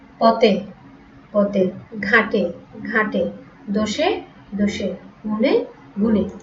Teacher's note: পদের অন্তে বা শেষে এ সম্বৃত হয়